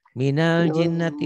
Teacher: Dibaca nyamber dan double. Ditahan, ada panjang 1 alif sampai 1 alif setengah. Kemudian ada dengung ke hidungnya, itulah gunnah.